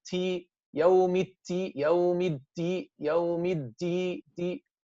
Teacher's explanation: Some people don't make it shadid, and they don't make it majhur. They make it mahmus instead.